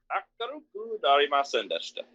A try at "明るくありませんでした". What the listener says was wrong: Now be careful, it almost sounded like you said akaruku narimasen deshita, which would actually mean something different. Akaruku arimasen deshita, it was not bright. If it were akaruku narimasen deshita, that would be it did not become bright.